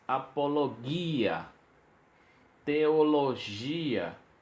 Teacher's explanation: observe na pronúncia que se separa as vogais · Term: hiato